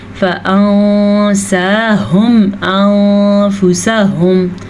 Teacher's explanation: यहाँ पे इख्फा हो रहा है क्योंकि नून साकिन से बाद सीन है जो कि हुरूफ़ इख्फा में से है, इसलिए हमने नून साकिन की आवाज़ को छुपाया है। · दोनों जगह पे मैंने नून को छुपाया